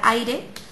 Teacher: común de diptongo por ejemplo la palabra aire pues lo vemos están la a y la i unidas en una sola sílaba